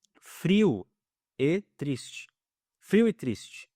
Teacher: O o ele é uma vogal fraca e o e ele é mais forte.